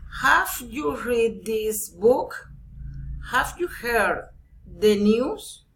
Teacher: general question rising intonation